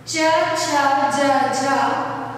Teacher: च वर्ण का उच्चारण करते समय हमारी जीभ ताल को स्पर्श करती है